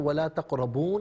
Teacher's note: تقربو میں را پر زبر ہے، را کو پر کر کے پڑھیں گے ولا تقربونی، اور وقف کریں گے تو ولا تقربون پڑھیں گے، نون کو ساکن پڑھیں گے